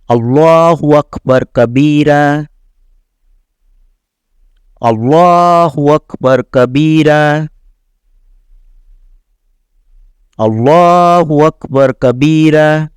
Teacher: جب یہاں پہ وقف کریں گے تو 2 زبر ہیں، تو آگے اگر الف ہو یا نہ ہو تو وقف کرنے پر اس کو الف مدہ کے برابر کھینچا جاتا ہے